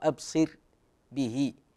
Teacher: كثير منهم يفخم الراء هي مرققه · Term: مرققة